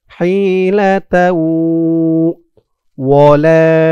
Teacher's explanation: এখানে ঈদগামে বাগুন্নাহ গুন্না হবে, কারণ তানবিনের পরে ঈদগামে বাগুন্নার ৪ হরফের ১ হরফ ওয়াও আসছে।